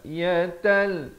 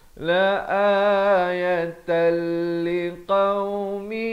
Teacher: idgham bila gunnah, daripada ayatan jadi ayatal. Di sini tanwin bertemu lam.